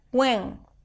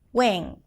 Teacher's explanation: making the I sound nasal and even putting a little bit of an NG sound at the end